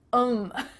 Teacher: The word them has the T-H cut out. And instead you're saying 'em.